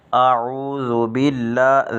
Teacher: ذال کو باریک پڑھیں گے، بغیر سیٹی کے پڑھیں گے